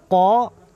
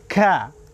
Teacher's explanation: Kalau kaf, ini istifal. Pangkal lidah tidak bertemu langit-langit.